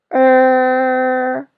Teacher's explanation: in china the last one special final we only have one this sound is similar to the er sound in writer in american english but it's longer so raise your tone a little higher and hold the position